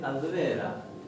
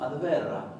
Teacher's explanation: con una leve R múltiple, como si hubiera dos